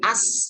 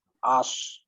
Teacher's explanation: Jadi gini, jadi ditebalkan shadnya.